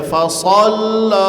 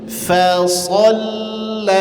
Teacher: Fa tipis sh tebal lam tipis.